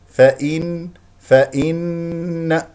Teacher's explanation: النون مشدده فيها غنه بمقدار حركتين